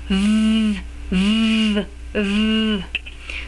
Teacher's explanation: So to make the V sound, we want to make an F in our lips, put the top teeth on the lower lip, and just like you make an F blowing air, you make a V with the same mouth, but you put a voice underneath it